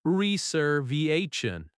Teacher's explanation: Stress reservation naturally on the third syllable.